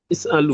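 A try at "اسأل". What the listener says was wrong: is'al, is'al mati sukun.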